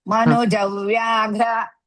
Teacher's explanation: In between Manuja and Vyaghra, small dvitvam of half va.